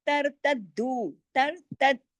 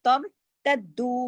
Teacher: کتب اللہ لکم ولا ترتدو، ترتد، را موٹا، تر تدو، باقی تمام باریک حروف ہیں، تدو کو سختی سے جوڑنا ہے، دال کے اوپر تشدید ہے، ڈبل دال ہے